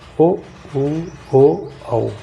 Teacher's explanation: जिनके उच्चारण में होठों का आकार गोल हो जाता है वो वृत्ताकार होते हैं।